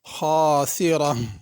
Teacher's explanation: خاسرہ خا بھی پر پڑھی جائے گی، را بھی پر پڑھی جائے گی، آخر میں ہا کی آواز ادا کرنی ہے،